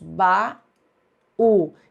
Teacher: baú é uma palavra oxítona, ou seja, tem a última sílaba mais forte